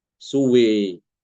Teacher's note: Wawunya diimalahkan, alifnya setelah wawu juga diimalahkan.